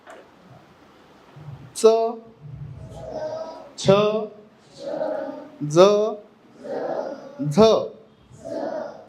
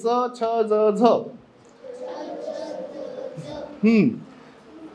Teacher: ही आपल्या दाताचं मूळ जे असत म्हणजे दात जिथून हिरडा पासून सुरू होतात तिथून उच्चारले जातात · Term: दंतमलीय व्यंजन